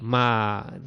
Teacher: tenemos una vocal cerrada tónica, que es la i, y una abierta átona, que es la a. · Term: iato